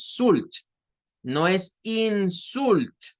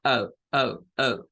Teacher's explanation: como que comienzo a sacar una A, pero termino sacando una U.